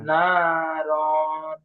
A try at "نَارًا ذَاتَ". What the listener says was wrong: র টান হবে না, গুন্না এটা গুন্না হবে না, রন, নাকে আওয়াজ উঠে যাবে। না, রন বলবেন, তারপরে যাতা বলেন।